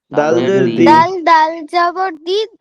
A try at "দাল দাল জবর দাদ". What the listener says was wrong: এই দাল দাল জবর দিদ হয় নাকি? দাল দাল জের, দাল দাল জের দিদ, দাল জের দি, দিদ।